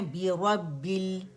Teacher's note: لام میں یوزلی کلکلا ہو جاتا ہے، وہ ہم نے نہیں کرنا